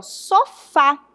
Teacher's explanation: Se eu falo sofá, a última sílaba é a forte, é uma oxítona, certo?